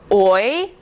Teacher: Long vowel sounds, short vowel sounds, diphthongs, and a diphthong is two letters that slide together so fast that they're considered to be in one syllable. And when you say a diphthong oi, your mouth actually moves twice